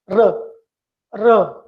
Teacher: When you pronounce R, the tongue pulls back in the mouth without touching the top. So the tongue doesn't, touch.